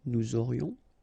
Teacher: final S not pronounced, and then you get this liaison